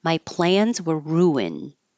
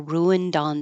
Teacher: So if it was by itself, you wouldn't hear the d if it's at the end of the sentence or before a consonant. It would just sound like an N.